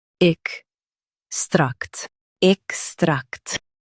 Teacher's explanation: Emphasize tract and keep ex soft.